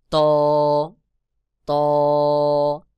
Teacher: জিহ্বার আগা সামনের উপরের দুই দাঁতের গোড়ার সঙ্গে লাগাইয়া ত উচ্চারণ হবে, যেমন ত ত। এরপর রয়েছে র।